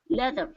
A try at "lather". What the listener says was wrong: it's going to be an ah. If you say le, leather is different.